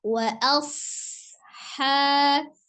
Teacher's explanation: Ketika dia sukun, huruf shad itu memiliki sifat desis ya atau as-shafir. Maka jangan dijedah wa asha tapi alirkan wa asha.